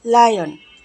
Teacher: এই সাউন্ডটা উচ্চারণ করতে গেলে আমাদের জিহ্বার আগা উপরের দাঁতের গোড়ার সাথে লেগে যাবে